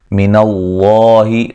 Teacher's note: وما املک، میم پہ مد جائز ہے، لکا، لمبا نہیں کرنا کسی کو۔ من اللہ، لفظ اللہ کو موٹا ادا کریں گے، اس سے پہلے حرف پر زبر ہے